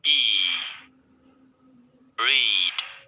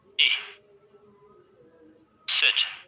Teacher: itu I-nya panjang ya, seperti dalam kata read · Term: long vowel